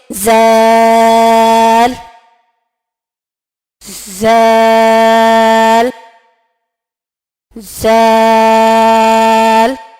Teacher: جو سا کا مخرج ہے وہی زال کا مخرج ہے. یعنی زبان کی نوک جب سامنے کے دانتوں کے سرے سے لگے تو زال ادا ہوتا ہے. تو زال کو ادا کرتے ہوئے ہم نرمی سے ادا کریں گے، جیسے زال زال زال.